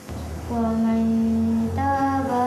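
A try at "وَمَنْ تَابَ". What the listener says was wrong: Jangan man, masukkan sikit ta. Waman taba. Kita dah nak masuk ta sikit ya. Sebab idgham ni di antara bunyinya di antara izhar. Kalau izhar bunyinya macam mana? Waman kan. Kalau idgham wamat. Tetapi di antara izhar dengan idgham, jadinya bunyi wama begitu.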